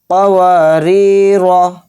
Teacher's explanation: پڑھیں گے صرف، وہ بھی جلدی، کس طرح سے، قواری را، اور را کو موٹا بھی پڑھیں گے یعنی پر، را کے اوپر زبر ہے۔